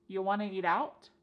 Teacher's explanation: And then we have reduced want to become wanna.